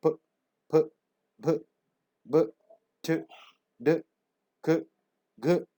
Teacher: This is complete closure and sudden release, plosives.